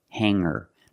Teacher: I don't pronounce the G sound it's just the nasal linked together with the ER